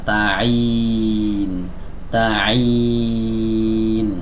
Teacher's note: Kasroh berarti rahang bawah diturunkan, tengah lidah diangkat